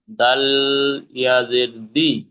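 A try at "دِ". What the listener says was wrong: দি টান দেবেন না। ফা পড়েছেন একটু আগে, আপনি বললেন ফি, আবার বলছেন ফা।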